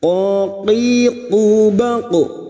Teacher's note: Qul huruf qof huruf istilla Jangan samakan dengan huruf Kaf